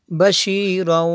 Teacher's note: تنوین کے بعد واو ہے حروف یرملون میں سے، یہاں پہ ادغام ہوگا